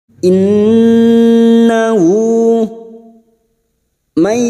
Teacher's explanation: nun sukun bertemu ya idgham bi gunnah, siap masuk dan mendengung masuk pada huruf berikutnya yaitu huruf ya dan mendengung selama 3 harokat